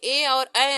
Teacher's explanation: ए और ऐ आते हैं, जिनका उच्चारण स्थान कंठ तालु से है